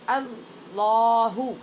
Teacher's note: حمزہ کو باریک اور لفظ اللہ کے لام کو پر